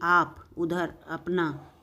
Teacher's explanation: जिनकी ध्वनि केवल मुख से निकलती है वो क्या कहलाते हैं, तो वो निर्नुनासिक कहलाते हैं। क्या कहलाते हैं, निर्नुनासिक, केवल मुंह से निकलती है जिनकी ध्वनि, जैसे कि आप, उधर, अपना, ये सब हैं।